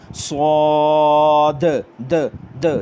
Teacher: इसमें आपको ये सीटी की आवाज़ भी आ रही है और सौद को मैंने मोटा किया, और आखिर में जो द की आवाज़ आती है ना, सौद, द द, ये दाल के ऊपर आवाज़ उछल रही है, इसको कलकला, सिफ्ते कलकला कहते हैं। तो यहाँ पर आपने दाल के ऊपर आवाज़ को उछालना भी है, लेकिन आराम से, इस पर सख्ती नहीं करनी।